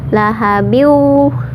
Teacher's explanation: Kemudian lahab ya, kalau berhenti di lahab itu qalqalah kubro atau qalqalah besar, tapi kalau membacanya disambung karena ada tanda waqaf, ada mal waqfi atau boleh disambung ya, lahabiu. Kalau disambung lahabiu itu jadi hukumnya idgham bi gunnah, jadi dimasukkan ke waw kemudian ditahan 2 harokat.